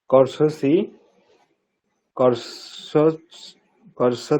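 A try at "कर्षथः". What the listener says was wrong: ত এবং থয়ের আপনার উচ্চারণ পার্থক্য বোঝা যাচ্ছে না। পঠতি, পঠতহ, পঠন্তি, পঠসি, পঠথহ। একটা হচ্ছে তহ আর একটা থহ। থয়টা একটু মহাপ্রাণ, মানে একটু জোর দিয়ে বলতে হবে থ, একটা ত আর একটা থ।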